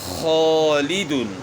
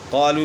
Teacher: خا جو ہے نا موٹے حروف میں سے تو الف موٹا پڑا جا رہا ہے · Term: موٹے الف